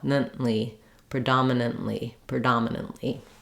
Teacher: Not nant with a release of air, but nant. Very short from the N to the other N sound. They're both very short. And then right into the L.